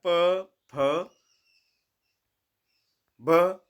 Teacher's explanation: प फ कहने में हमारे ओठों का प्रयोग हो रहा है इस वजह से इनको ओट व्यंजन कहते हैं कवर्ग कंठ से